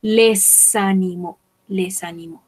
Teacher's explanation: Recordemos que acá hacemos un pequeño puente entre la S y la A.